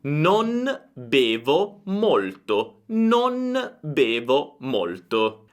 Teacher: quando una N è seguita da M, P o B, allora il suo suono cambia e diventa una M